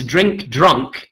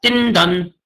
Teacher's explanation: you would remove any final consonants. The k sound is gone, and you would remove any consonant clusters, the dr and the dr on both words, and you would end up with din dun.